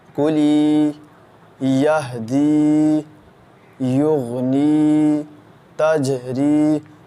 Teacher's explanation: جب زیر کے آگے یا ساکن ہوگا تو اس کو ایک الف کے برابر کھینچ کر پڑھیں گے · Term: یا مدہ